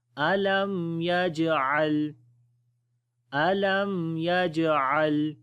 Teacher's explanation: اس وجہ سے کمزور قلقلہ ہوگا۔ یجعل، عین کو گلے کے درمیان والے حصے سے پڑھیں گے